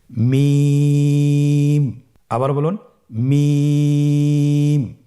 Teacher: মিম হরফটি উচ্চারণের ক্ষেত্রে অবশ্যই বারিক হবে, পাতলা হবে এবং তিন আলিফ টেনে উচ্চারণ করতে হবে। · মিম হরফটির উচ্চারণ স্থান দুই ঠোটের শুকন স্থান থেকে উচ্চারিত হয়